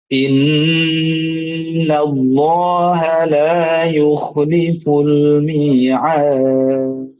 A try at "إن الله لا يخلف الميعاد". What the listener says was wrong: Huruf kha-nya dilatih lagi ya. Kayak misalnya innallaha la yakhfa. Itu suara kha itu halus kemudian mengalir. Nafas mengalir. Yakhfa, la yuh. Terlalu ditekan gitu makhrajnya, diberikan lemahkan. Innallaha la yakhfa. Jangan jangan jangan seperti ngorok gitu, jangan terlalu keras gitunya, dilemahkan.